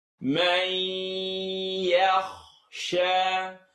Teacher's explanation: It's going to vibrate in your nose. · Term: nasaling sound